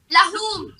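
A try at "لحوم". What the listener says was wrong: Luhum. Lam with Dhamma. Luhum, not lahum. Luhum.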